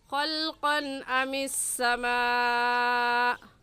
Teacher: خلقاً پر غنہ نہیں کریں گے کیونکہ تنوین کے بعد حروف حلقی میں سے حمزہ آ گیا ہے